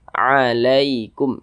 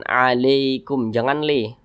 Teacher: Huruf lin pada huruf ya sukun itu hati-hati cara melafazkannya. Jadi baca lunak ya. Jangan sampai condong ke e. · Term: huruf ya sukun yang lin